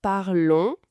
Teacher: avec ce son de nasal on à la fin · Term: son nasal on